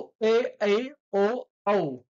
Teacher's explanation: दीर्घ स्वर आहेत यांना उच्चार करण्यासाठी उच्चार करण्यासाठी जास्त वेळ लागतो उच्चारात जास्त वेळ लागतो म्हणून याला दीर्घ स्वर असे म्हणतात